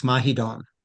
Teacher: The final L sounds like an N